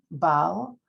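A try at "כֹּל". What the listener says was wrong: Kol. No, that's a cuff.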